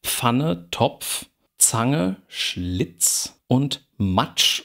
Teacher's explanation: Die bestehen aus einem Plusiv plus einem Frikativ. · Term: Afrikaten